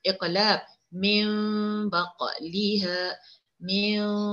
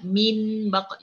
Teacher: Okey, itu hukumnya iqlab. Okey, bunyikan bunyi mim, bukannya bunyi nun, bukannya min baq, enggak.